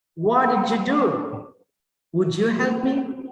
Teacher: So D plus Y become J sound.